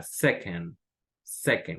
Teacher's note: esta segunda sílaba es como una E muy, muy poco pronunciada